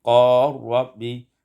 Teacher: idghamul lam fir ra, diidghamkan lam pada ra menjadi qar rabbi.